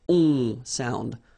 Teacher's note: you don't pronounce the final s, you get the on sound. Okay? Nasal in your nose, on.